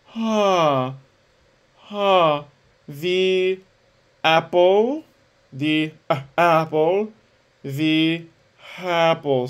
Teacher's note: So we're just delaying the onset with an H. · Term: aspirate onset